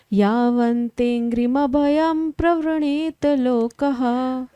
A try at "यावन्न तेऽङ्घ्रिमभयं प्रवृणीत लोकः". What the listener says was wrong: तावन्ममेत्य सदवग्रह आर्तिमूलम् यावन्न तेङ्ग्रिभयं प्रवृणीत लोकः। ना भी था उसमें, कोई बात नहीं, ठीक है।